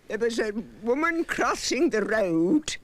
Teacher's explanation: i love how she uses the rs those rolling r's are amazing